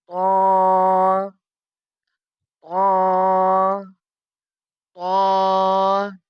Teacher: طا زبان کی نوک اور اوپر کے دانتوں کی جڑ سے ادا ہوتا ہے۔